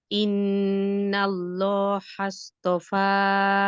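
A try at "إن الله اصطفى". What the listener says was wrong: আবারও হাসপফা হয়ে যাচ্ছে আপনার, আপনি প্রেশার দিয়েন না।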